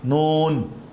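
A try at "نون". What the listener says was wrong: নুন না, নুন টেনে, নুন, হ্যাঁ, হ্যাঁ, গলাটা ছেড়ে দেন, হ্যাঁ,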